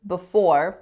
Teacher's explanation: with a schwa on that first syllable